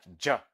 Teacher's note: like ja, is a voiced post-alveolar affricate.